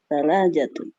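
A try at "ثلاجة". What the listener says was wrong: Salajah. Bitasydid. Pakai tasdid. Salajatun.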